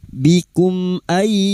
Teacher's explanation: mim sukun dibaca jelas tanpa mendengung bikum ay nun sukun bertemu ya idgam biguna masuk dengan mendengung masuk huruf ya dan mendengung selama tiga harakat. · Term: idhar syafawi